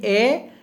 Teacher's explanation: कंठ और तालु के बीच की जगह जो है, आप उच्चरित करके देख लीजिए ए। तो ए जब बोलेंगे तो आपकी जीभ जो है उसका पिछला भाग वो कंठ और तालु के बीच वाले जगह पर वो थोड़ा ऊपर उठेगा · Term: कंठ तालु